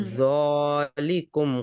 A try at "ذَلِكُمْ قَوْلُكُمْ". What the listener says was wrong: ذال کو موٹا نہیں کریں گے، ذال باریک لیٹرز میں سے ہے. ذالکم نہیں بولیں گے، ذالکم قولکم.